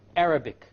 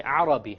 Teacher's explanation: the english r comes from the middle of the tongue and the arabic comes from the tip of the tongue